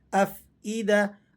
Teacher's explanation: حمزہ کو آپ نے بالکل نہیں کھینچنا. یہاں یہ غلطی ہوتی ہے کہ بعض لوگ حمزہ کو کھینچ کر پڑھ دیتے ہیں افئدہ، تو ایسا کرنے سے بہت بڑی غلطی ہو جائے گی جو لحن جلی کی غلطی شمار ہوتی ہے.